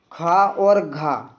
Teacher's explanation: 2nd और 4th option आपका जो रहता है वर्णों का वो क्या कहलाते हैं, महाप्राण कहलाते हैं। यहाँ पर क्या दिया हुआ है, खा, यहाँ पर क्या दिया हुआ है, खा और आपका घा।